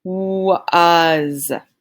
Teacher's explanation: we hear the A saying the sound, the short U, and the S saying the Z sound